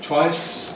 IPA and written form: twaɪs (twice)